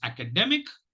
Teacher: it has 4 syllables with the secondary accent on the 1st syllable and the primary accent on the 3rd syllable